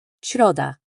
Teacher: This is a softer than the English in sheep, with your tongue moving up toward the roof of your mouth. Think of it as a whispered, gentle sh. An example would be the Polish word for Wednesday, środa. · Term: S with accent